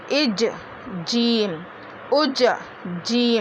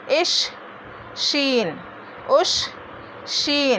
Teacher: जीम, शीन, या ज़बान की बीच और उसके मुकाबिल ऊपर के तालु से अदा होते हैं। हमारी ज़बान का जो बीच का हिस्सा है वो जो है ऊपर के तालु को लगता है।